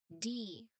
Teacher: Now the tip of your tongue, it should firmly touches the ridge behind your top teeth. So the air stops completely and then it just burst out.